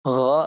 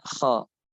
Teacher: Nah, ghain dibedakan dengan jahar, kha dibedakan dengan hams. Berarti kalau ghain dia tertahan nafasnya. Kalau kha dia mengalir nafasnya. Wa hadzir minal khalti bainahuma, dan hati-hati jangan sampai kita mencampur antara keduanya.